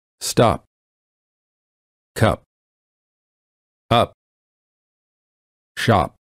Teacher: when they say the letter P in the word stop, the lips stay closed. No air comes out. This creates almost a silent version of the sound P, or a half P.